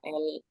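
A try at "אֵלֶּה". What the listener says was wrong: eleh. Ini E-nya hilang. Eleh ini iya. Vokalnya hilang ini. Iya betul, bacanya eleh itu.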